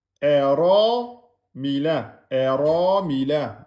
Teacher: vous prononcez bien le ra fatha, donc emphatique. Et comme il est suivi du alif, vous mettez bien 2 temps.